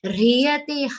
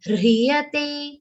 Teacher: Rhyate, half ha and full ra with the e sound.